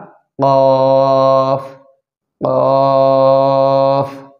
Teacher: 4 নম্বর মাখরাজ জিহ্বার গোড়া তার বরাবর উপরের তালুর সঙ্গে লাগিয়ে 2 নুক্তাওয়ালা কফ।